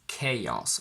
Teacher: I would pronounce it as chaos with a little bit of a y in the middle. Now, I've done extensive research on this, and some dictionaries use a bit of a y when they pronounce the word, and some don't.